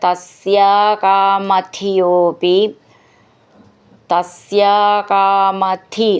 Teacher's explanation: തസ്യ അകാമധിയ അപി ചേർത്തിട്ട് തസ്യാകാമധിയോപി, തസ്യാകാമധി എന്നുള്ളതിൻ്റെ ധി എന്ന് നന്നായിട്ട് ഊന്നി പറയണം.